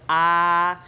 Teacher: I come all the way down to an open Sound my jaws completely open